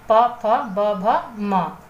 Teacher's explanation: पावर, पावर में आपका ओष्ठ, इनका उच्चारण स्थान है, दोनों होठों की सहायता से यह जो आपके व्यंजन है यह उच्चरित होते हैं